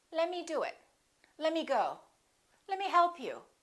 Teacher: A few more rules of casual speech. Let me often becomes lemme. The T disappears.